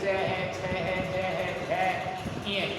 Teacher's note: इनका उच्चारण स्थान तालु से होता है